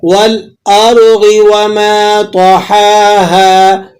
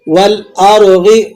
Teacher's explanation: را ساکن ہے اور اس سے پہلے والے حرف پر زبر ہے، تو آپ نے اس کو را کو موٹا پڑھنا ہے.